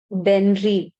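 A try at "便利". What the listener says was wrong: Very good.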